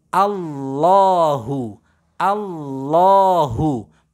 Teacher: harus terbaca tebal tebalnya pada lafadz lam jalalah · karena lam jalalah dan sebelumnya berharokat fathah, maka cara membaca lam fathahnya ini bukan Allahu, tapi harus terbaca tebal